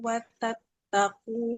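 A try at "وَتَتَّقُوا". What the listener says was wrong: Nah, ini bukan watat aku. Tak yang pertama nggak bertasdid ya, nggak boleh ditekan.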